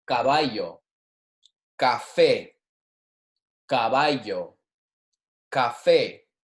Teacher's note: when our C is being followed by an a it's going to be a hard consonant like our car almost like a K in English